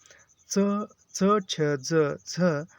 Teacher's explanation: उच्चारण के बाद वाला भाग संघर्ष हो जाता है और वे स्पर्श कहलाते हैं।